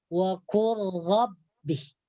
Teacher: lam dengan ra makhrajnya berhampiran. Cara membacanya diidghamkan kepada huruf yang kedua. Huruf yang pertama mati itu diidghamkan kepada huruf yang kedua. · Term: idgham mutaqaribain